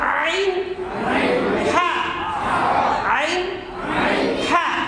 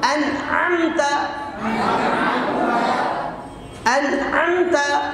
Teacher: আইন হা, কণ্ঠনালীর মাঝখান থেকে